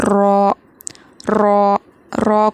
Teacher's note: رو کو موٹا پڑھیں گے، اور رو ادا ہوتا ہے زبان کے جو کنارے ہیں لیفٹ اور رائٹ سائڈ کے، وہ جا کر داڑھوں کو ٹچ ہوں گے، سے ادا ہوگا رو، رو۔